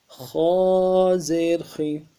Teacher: خا موٹا پڑھیں گے، خا کو موٹا کرنے کے لیے زبان کے بیچ بھی اٹھائیں گے، اور موٹا کرنے کے لیے ہونٹوں کو بالکل گول نہیں کریں گے۔